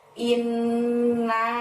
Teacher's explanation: pada awal ayat yang ke-1 dimulai dengan lafadz Inna saat ini ditahan dan ditekan selama dua harokat ya karena ada Nun tasjid disitu kemudian naiknya panjangnya lima nah seperti itu jadi membaca yang ingat